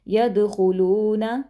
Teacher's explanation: یدخلون، دال پر کلکلا کریں گے، حروف کلکلا میں سے ہے، خوا کو موٹا پڑھیں گے۔ خلون، لام کو لمبا کریں گے کیونکہ آگے واو مدہ ہے